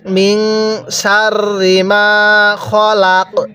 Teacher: অনেকেই র এর মধ্যে টান দিয়ে থাকি র এর মধ্যে টান দিব না